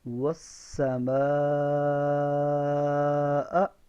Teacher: اب یہاں پہ واو میں اونٹ گول، سین میں سیٹی کی آواز، اور مد کو 5 الف لمبا کرنا ہے، یعنی جتنی دیر میں 5 انگلیاں کھلتی ہیں یا بند ہوتی ہیں اتنی دیر ہم اس مد کو لمبا کریں گے.